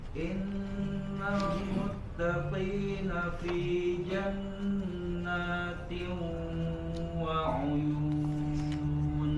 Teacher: karena idgham bi gunnah juga merupakan yang sempurna, kita harus masuk ke hidung suaranya.